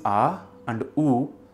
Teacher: The sounds aa and uu when mixed together form the sound O. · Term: gUNa sandhi